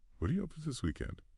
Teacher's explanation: And this brings up another really important sound change we touched on earlier. That T in what turning into a softer D sound